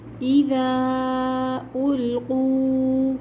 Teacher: قاف کے بعد جو واو ہے واو مدہ ہے، اس کو 2 کاؤنٹس کھینچ کر پڑھیں گے۔